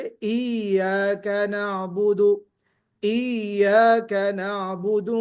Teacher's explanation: या की तशदीद को इतना फोर्सफुल्ली पढ़ते हैं कि वो जीम की तरह आवाज आने लगती है